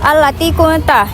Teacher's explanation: Bacaan ikhfa dibaca secara samar disertai dengan dengung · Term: ikhfa hakiki